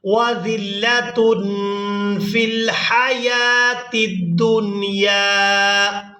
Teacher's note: تنوین میں جو نون کی آواز ہے اس کو ہم ناک میں چھپا کر ادا کریں گے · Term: اخفا